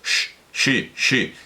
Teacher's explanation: la cerebral es redondeando los labios